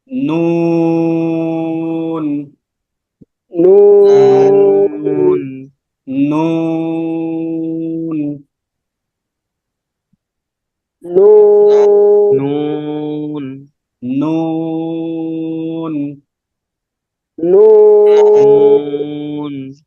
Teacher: নুনটা একেবারে সহজ জিহ্বার আগা উপরের তালুর সাথে লাগবেন জিহ্বার আগাটা উপরের তালুর সাথে লাগাবেন যেহেতু নুনের ক্ষেত্রে ওয়াও টা